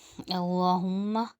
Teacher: اللہ اس کے ساتھ زبر آ رہا ہے تو اللہ کا نام موٹا، اللہم میں ہمیشہ اللہ موٹا پڑا جائے گا۔